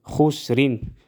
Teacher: یا مدہ ایک الف کے برابر کھینچ کر پڑھیں گے خسرین وصل کی صورت میں را باریک ادا ہوگا اور وقف کی صورت میں را ہم پر ادا کریں گے